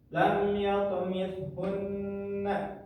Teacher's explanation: maka kita harus baca ditekan selama kurang lebih dua ketukan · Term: nun bertasydid